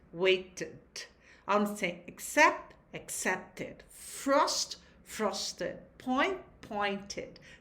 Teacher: Neste caso, o ED é pronunciado, vai ter som de ud e forma uma nova sílaba. Por exemplo, onde você tem wait, waited.